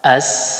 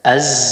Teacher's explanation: Kalau sin dia mengeluarkan nafas, kalau zai tidak menghembus begitu. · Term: sifat al-hams